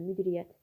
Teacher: Y samiti tələffüzə düşür, vurğusu sonuncu hecadadır, düzdür.